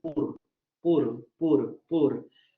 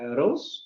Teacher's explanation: el fonema vibrante simple alveolar sonoro también es una realización muy extendida en Canadá. Es decir, podemos tener casos en donde digan pur, pur, pur, pur, o donde digan, en lugar de decir pur, ¿no?